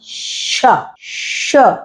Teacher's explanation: श जो है तालु से बोला जाता है, तालव्य होता है, क्योंकि आप देखिए जीभ नहीं लगती, जो आपकी तालु होती है, जीभ का बीच का भाग होता है, वो बोलते हैं श।